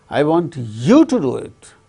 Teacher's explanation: importance is given to you.